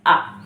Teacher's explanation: तो आ में जो है गले से आवाज निकलती है। ठीक, आ वर्ण की उत्पत्ति गले से, आ।